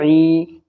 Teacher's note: عین یا زر عی، یا ساکن سے پہلے عین کے نیچے زیر ہے تو یا مد ہوگا یعنی یا کھینچے گا